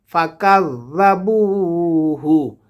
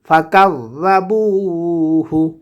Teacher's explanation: জালটা জিহ্বার আগা থেকে নরম করে উচ্চারণ হবে।